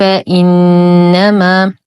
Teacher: نحقق الهمز لا نقول فانما بالتسهيل